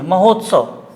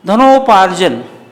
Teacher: इसी प्रकार से धन, यहाँ पे अ है, यहाँ ऊ है, अ और ऊ का जब मिलेंगे तब उसका उच्चारण ओ में होता है। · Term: गुण संधि